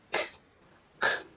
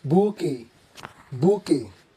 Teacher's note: In French, the QU is pronounced together as k, k, and the T is silent, giving this a soft and elegant sound.